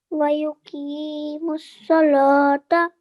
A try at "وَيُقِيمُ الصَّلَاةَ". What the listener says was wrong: You need to elongate this for 2 seconds as well. Vertical fatha.